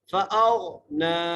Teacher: آگے فَأَغْنَى فا زبر فا حمزہ کو غین سے ملانا ہے اور غین کو موٹا کر کے پڑھنا ہے. فَأَغْنَى نون کو بھی ایک الف مقدار کھینچ کے پڑھنا ہے.